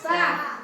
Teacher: तालव्य सा बोलते हैं। तो हमारा जो जीभ है वो क्या करता है? तालु में जाकर टच करता है। इसलिए इसको तालव्य श बोलते हैं और इसका उच्चारण अलग होता है।